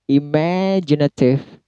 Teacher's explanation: Me-nya yang di stress